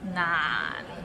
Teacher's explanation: 難 is not 難, it means difficult and it's difficult to pronounce. So it starts with N and ends with another N. 難, and it's in a low tone